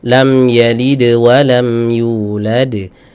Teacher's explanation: Adapun suara yang Dal yang pertama lam yalid sama bunyinya cuma dia langsung ketutup sama suara huruf lain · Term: Qalqalah